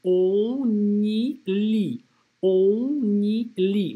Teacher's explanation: «On», связочка здесь будет со звуком «н», то есть мы сначала делаем хороший нос, мы произносим это носом, мы говорим «on», потом делаем связку со звуком «н» и говорим «ни», и потом «ли», «on y lit».